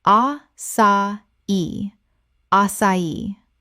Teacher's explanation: The accent on the final i tells you to stress the last syllable.